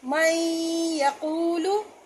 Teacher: ساکن حرف کو نہیں پڑھتے، ڈائریکٹ میم کو یا سے ملائیں گے تو اس کو پڑھیں گے میں یقولو، تو یا کی مثال آ گئی ہے اور غنہ بھی ہو رہا ہے، ملانے کی صورت میں شد بھی پیدا ہو رہی ہے.